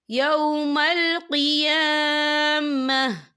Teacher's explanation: وقف کی صورت میں تا جو ہے ساکن ہو جائے گا